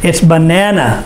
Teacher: the stress is on the second syllable bananas